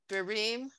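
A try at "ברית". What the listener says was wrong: No, the last letter.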